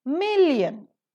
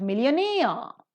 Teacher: The first syllable is accented, but millionaire, the second syllable is accented.